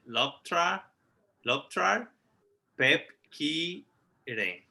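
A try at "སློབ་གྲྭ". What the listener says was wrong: Perfect. Good.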